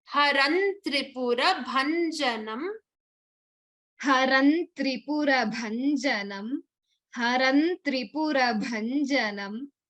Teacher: So tra is made up of Ta and Ra. So we need to pronounce it as Haran Tripura, not Haram and Tripura. It becomes Haran Tripura when we pronounce continuously.